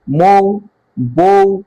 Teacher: যখন আমরা বলছি মৌ, বউ, তখন কিন্তু হর্ষটা অর্ধেকটা উচ্চারণ হচ্ছে, তাই এটা অর্ধস্বর